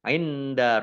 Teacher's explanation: nun sukun bertemu dengan huruf Dal bacaan Ikhfa